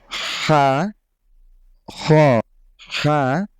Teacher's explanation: বাংলা খ থেকে একটু মোটা করে পড়লেই এটার উচ্চারণটা হয়ে যাবে